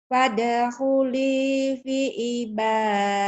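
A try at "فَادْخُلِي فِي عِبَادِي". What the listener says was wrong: Fi-nya panjang. Fadkhuli fi ibadi. Fadkhuli fi ain. Fi ibadi. Ayo ain. Fi ibadi.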